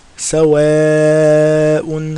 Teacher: Now look, ignore the mad, fatha followed by alif, so that's 2 harakas, and then immediately after that there's a hamza, so it's 4 or 5 harakas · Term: mad wajib